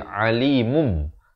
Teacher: Ditukarkan. Daripada bunyi nun itu mun jadi tukarkan kepada bunyi mim. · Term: hukum iqlab